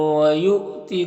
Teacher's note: حمزہ ساکنہ ہے واو کی شکل میں، تو جھٹکا لگے گا۔ ذی میں یا مدہ ہے، ایک الف کے برابر کھینچیں گے۔